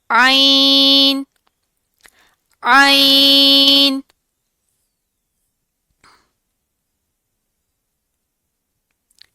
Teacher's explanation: जो त जो नेक्स्ट वर्ड इज़ आइन ऐन आइन और हा का सेम मखरज है। हलक के दरमियानी हिस्से से अदा होते हैं। यह भी नरम हरूफ में से है।